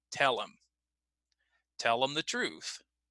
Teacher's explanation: we're going to cut the H and we're going to link them together